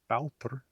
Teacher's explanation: Another interesting pronunciation difference with Icelandic is that the long A, which has become ow in Icelandic in a word like bátur